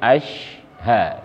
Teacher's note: asyha tanpa harus memonyokkan kedua bibir ya atau syafatain karena dia bukan makhraj bibir